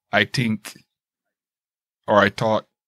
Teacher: irish people tend to use a t sound instead of a th sound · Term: irish pronunciation